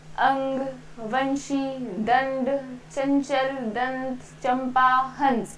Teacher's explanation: हम देख रहे हैं इनमें हमारी नाक और मुंह दोनों से हवा आ रही है और ये स्वर और व्यंजन के मेल से बने हुए हैं। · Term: अनुस्वार